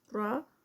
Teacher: را یہاں پر اینڈ پر heavy ہوگا